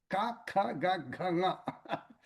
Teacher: These are called kantavyas. They come from throat. Guttural, it's called in English.